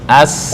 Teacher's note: Ini sin biasa, istifal, lidahnya turun.